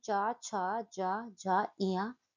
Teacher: च वर्ग जो होते हैं च, छ, ज, झ, ञ इनका उच्चारण तालु से होता है और इनके उच्चारण करते समय जिह्हा जो है वह हम तालु को टच करती है।